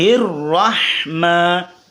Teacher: آگے ہا زیر ہی کو را کے ساتھ ملائیے اور را پر زبر ہو تو را موٹی ہوتی ہے. را کو موٹا پڑھیں اور ہا کو باریک پڑھیں